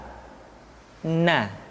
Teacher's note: Caranya menyentuhkan ujung lidah kita di antara posisi ro dengan la. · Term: Huruf na